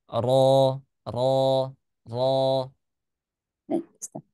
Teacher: rnya tebal karena rnya berharakat fathah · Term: Ro-nya tebal